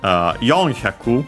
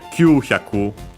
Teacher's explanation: All these are accent on the first moras.